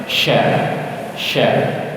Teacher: kalau huruf shin tidak ada suara tajamnya, hanya ada suara hembusan angin